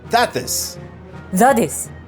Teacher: That, this is linked, and the T at the end of that gets dropped. So it sounds like that, this.